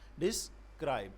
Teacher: Unstressed syllable is followed by stress syllable, as in describe. Describe mean this, it will be spoken little with less voice. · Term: I am